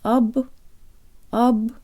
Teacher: Now the first syllable. The O sounds like an A-flavored schwa.